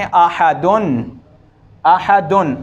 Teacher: तनवीन जो होती है दरअसल पढ़ने में नून होती है। जैसे ये देखें, आहदुन, आहदुन, अगर हम इस आवाज़ को लिखने की सूरत दें तो ये ऐसे होगी, आहदुन आहदुन।